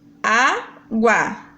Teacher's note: Quando eu faço a divisão silábica, água. O U e o A ficam na mesma sílaba, então eu tenho um ditongo.